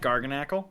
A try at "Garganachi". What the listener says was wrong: that's an I at the end. It looks like a lowercase l, but it's actually an I.